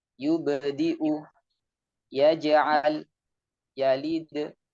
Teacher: pada huruf tipis, yaitu huruf ba, jim, dan dal, maka pantulannya berbunyi seperti e, seperti e. · Jadi dekat dengan huruf e. Karena suaranya tipis, maka langsung pantulannya langsung keluar dari mulut tanpa naik ke langit-langit atas. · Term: qalqalah, qalqalah tipis